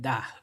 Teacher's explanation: It has like an angry tone, or like a falling tone at the end of it